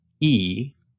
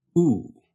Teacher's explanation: Your tongue goes forward for E and pulls back for oo.